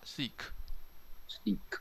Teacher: 是气声，气摩擦的声音，所以你摸喉结不会有震动哦